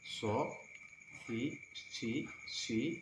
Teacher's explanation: Sedikit monyong. Namun ketika dia berbaris bawah kasrah, itu monyongnya lebih sedikit lagi daripada ketika dia berbaris atas atau depan. So, si, ada suara sod.